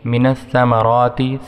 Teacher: سا کو ہم دونوں دانتوں کے درمیان اپنی زبان کو جب لگائیں گے، یا اوپر والے دانتوں کے دونوں دانتوں کے درمیان اپنی زبان کو جب لگائیں گے تو سا ادا ہو جائے گا ، سا۔ اس کے بعد را کو ہم موٹا پڑھیں گے،